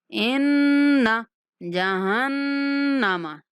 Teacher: ان مشدد نون ہے، غنہ کریں گے